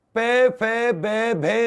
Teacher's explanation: पे फे बे भे में हमारी जीभ होठों को टच करती है, ये ओष्ठ्य व्यंजन